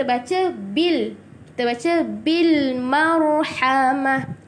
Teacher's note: Alif lam qamariyah ni maksudnya kita perlu jelaskan huruf lam dia. Kita kena jelaskan huruf lam dia.